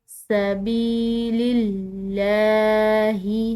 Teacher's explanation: یہاں پر لفظ اللہ کی لام باریک ادا کریں گے کیونکہ اس کے پیچھے کا جو حرف ہے اس کے نیچے زیر ہے۔